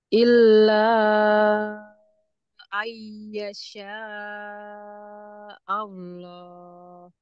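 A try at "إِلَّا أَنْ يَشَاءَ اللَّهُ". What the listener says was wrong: Tahan. Tahan dulu, ay. Jangan langsung ayyasa. Tahan dulu.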